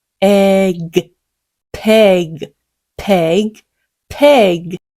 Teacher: 방금 전에 P를 시작했던 그 소리가 대표 음가입니다. 윗입술, 아랫입술 공기 굉장히 강하게요. 터뜨려주세요.